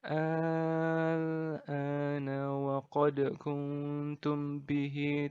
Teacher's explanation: Nah, pembacaannya gimana? Pembacaannya adalah dengan dibaca panjang 6 harokat. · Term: mad lazim mukhaffaf kalimi